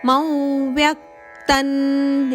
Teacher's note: ಇಲ್ಲಿ ಅನುಸ್ವಾರದ ಉಚ್ಚಾರಣೆ ನದಂತೆ ಬ್ರಾಕೆಟ್ ಅಲ್ಲಿ ಕೊಟ್ಟಿದ್ದಾರೆ ನ ಅಂತ ಹೇಳಬೇಕು